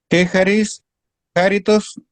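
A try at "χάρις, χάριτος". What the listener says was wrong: Muy bien,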